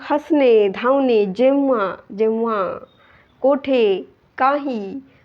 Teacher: या शब्दांमध्ये अनुस्वाराचा जो उच्चार आहे तो एकतर अस्पष्ट आहे किंवा नाही आहे. ओके, मग हसणे, धावणे, जेव्हा, कोठे, काही, तर यामध्ये अनुस्वाराचा उच्चार अस्पष्ट आहे.